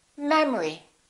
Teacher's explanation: the second syllable is reduced the first syllable is stressed